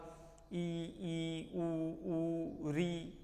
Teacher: जैसे हमने बोला था ई, ऊ, ऊ, री, ये ऐसे स्वर हैं जिसमें होंठ कैसी भी स्थिति में हो, लेकिन जो हवा निकलने का मार्ग है वो छोटा होता है, कम खुलता है मुख। ठीक है। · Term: समृद्ध स्वर